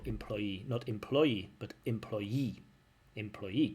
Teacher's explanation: Employee. Stress on that last syllable.